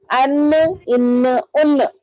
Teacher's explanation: زبان کا کنارہ اوپر کے سامنے کے ایک نوکیلے دانت سے لے کر دوسرے نوکیلے دانت کے مسوڑے کو لگانے سے ادا ہوتا ہے. ان ان ان مسوڑوں کو لگانا ہے دانتوں کو نہیں. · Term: نون